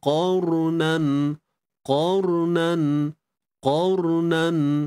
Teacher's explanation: ra mati sebelumnya pada atas qar, perlu dibaca tebal